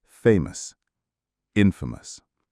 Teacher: The stress for both words is on the first syllable, famous, infamous.